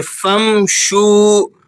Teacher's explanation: اس صورت میں یہاں پر آپ نے غنہ ادا کرنا ہے اور آگے فا کو میم سے ملائیں گے بغیر غنے کے، فمشو، اور واؤ کو آپ نے 1-2 سیکنڈ کھینچ کر پڑھنا ہے کیونکہ واؤ مدہ ہے